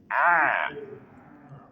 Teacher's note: ain dari tenggorokan bagian tengah